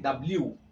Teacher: दोनों होंठ आपस में मिलते हैं, गोल हो जाते हैं